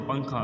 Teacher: پنکھا میں نون بیچ میں آ رہا ہے اور آواز ناک میں جا رہی ہے۔ آپ صرف اتنا دھیان میں رکھیے کہ جو بھی لفظ کے اندر آواز ناک میں جا رہی، ناک سے آ رہی ہوں، سو وہ نون گنہ ہے۔